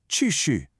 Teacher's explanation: The correct respectful phrase is notice both words are said with a falling tone